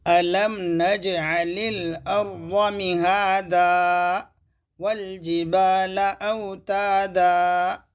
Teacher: آخر میں آیت پر جھٹکے دیتے ہیں تو حمزہ کا اضافہ ہوگا، حمزہ اضافی ہوگی، یعنی ایک حمزہ زائد نکلے گی تو لہنے جلی ہوگا.